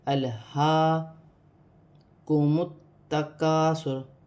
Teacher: الہاکم التکاثر حتی زرتم یہاں لام ساکن ہے، لام کو حمزہ کے ساتھ ملا کر پڑھا جائے گا، اور ہا سینے والی ہا پر کھڑی زبر ہے، اسے ایک الف کی مقدار کھینچ کر بھی پڑھا جائے گا